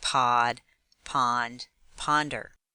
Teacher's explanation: the short sound of vowel o is ah